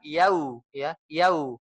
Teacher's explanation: Yaunya ibu harus manyun, Bu. Harus dimonyongkan ke depan.